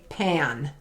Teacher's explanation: pan technically has the short a sound which is a, but when it gets beside that n, it kind of puts a little twang to it